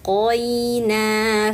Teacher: sempurnakan dulu fathahnya qo lalu naikkan tengah lidah untuk ya sukun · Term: harfun